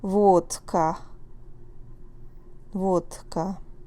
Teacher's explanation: the d will sound more like t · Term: voiceless